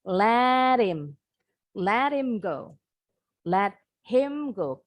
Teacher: the native English speaker often drop the H in the pronoun him and her